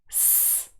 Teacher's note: Remember that we form some sounds in English using our vocal tracts situated here in our throat, and those are voiced, but others do not use vibration from the vocal cords, and they are called unvoiced. So if you put your hand lightly on your throat, s, there is no vibration from your vocal cords